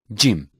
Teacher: Jim is pronounced when touching the roof of mouth with the middle section of tongue. It is a weak consonant and sound is similar, Jim.